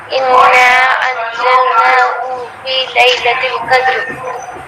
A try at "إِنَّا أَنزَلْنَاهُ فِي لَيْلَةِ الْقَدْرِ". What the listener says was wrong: ابھی بھی کھینچ رہی ہیں. نہیں، ہو فی لیلۃ القدر، ہو فی لیلۃ القدر.